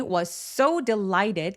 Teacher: So 강세 주셔야 되고요. was so 얘도 s하고 s하고 만났으니까 한 번만 발음하기.